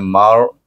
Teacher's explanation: mim baris atas dengan ra yang mati bunyinya Mar dengan tebal tafkim